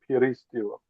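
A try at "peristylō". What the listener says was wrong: It sounded like you had the accent on the wrong syllable, but that may have been the audio. it's on that one. Y.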